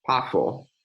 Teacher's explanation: where we have a voiceless bilabial fricative